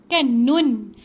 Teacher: Hujung lidah dekat atas, lelangit atas. Hujung lidah tahan dekat lelangit atas. Dia bukan 2 bibir tutup. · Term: nun mati